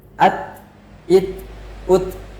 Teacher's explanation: Jadi ketika ta sukun terdapat hams di sana. At, it, ut atau aliran nafas.